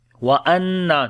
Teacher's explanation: نون کے اوپر شد غنہ کریں گے، لمبا بھی کریں گے